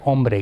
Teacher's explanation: one the N will drop and we'll get om which is what happened in French om or the n will dissimilate to r and that's what happened in Spanish so you get omree m r and then you need this b develops as a sort of a buffer consonant between the m and the r